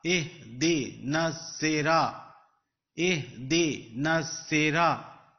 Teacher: Noon is going to join the sad, because sad is with shadda. Noon zabar sad nas.